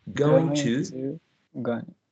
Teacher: Well, talking about reduction of to, long u turns into a schwa